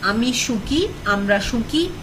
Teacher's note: in the first person form, the vowel of the first syllable changes from O to U